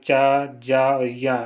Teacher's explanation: तो इसमें जो है चा, जा और या, ये अल्प प्राण ध्वनियाँ है